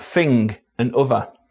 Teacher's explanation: TH fronting in words like thing and other.